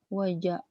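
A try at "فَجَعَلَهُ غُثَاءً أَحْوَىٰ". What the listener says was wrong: Fa, bukan wa. Fa.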